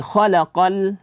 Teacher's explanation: lamnya jangan sampai dibaca tebal. Khalaqal insan, jangan dibaca khalaqal, jangan dipantulkan bunyi daripada huruf lamnya.